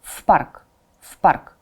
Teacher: Preposition pronounced together with the noun. The noun starts with the voiceless consonant, so v becomes voiceless.